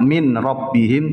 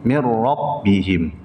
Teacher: ada nun sukun bertemu dengan ro idgham bila ghunah langsung masuk ke huruf ro